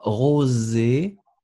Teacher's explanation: Essayez de faire le zzz un tout petit peu plus léger.